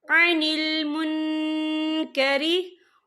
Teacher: नून साकिन की आवाज को नाक में छुपाएंगे। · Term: इक्फा